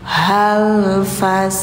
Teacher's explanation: Hal jangan panjang karena setelahnya ada tanda sukun.